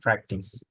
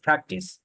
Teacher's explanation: মানে পি এর মধ্যে প্রেসার দিতে হবে, এটাকে বলে প্রাইমারি স্ট্রেস। পি এর মধ্যে আমরা প্রেসার দিয়ে আমরা উচ্চারণ করবো প্র্যাকটিস, প্র্যাকটিস।